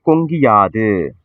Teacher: அப்ப கு வந்து கீயா மாறுது இல்லையா, அந்த சவுண்டு வந்து கு என்பது ஒரு மாத்திரை, கி அப்படி சொல்லும் பொழுது ஒரு மாத்திரையில இருந்து அரை மாத்திரையா ஒலிக்குது இல்லையா, இதுதான் குற்றிய லிகரம்.